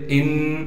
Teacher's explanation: نون پر تشدید ہونے کی وجہ سے غنہ کریں گے